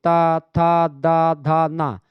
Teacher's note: अब जब इसको आप बोलते हैं तो इसमें दांत जो है आपका, मतलब कुछ आपकी जो जीभ है वो दांत में जाकर के टच करती है। तो दंत व्यंजन है ये।